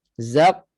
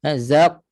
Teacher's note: Masuk qaf terus letak pada makhraj qaf. Zaq. Letak pada anak tekak dah.